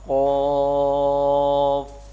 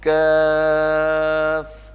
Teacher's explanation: اب دیکھیں نا، ایک ہے کاف نارمل اور ایک ہے کاف باریک کر کے، اس کو منہ کو تھوڑا سا کھول کے. ہاں جو دو نقطوں والی ہے نا وہ موٹی ہے، اور یہ کاف جو کتاب والی ہے یہ باریک ہے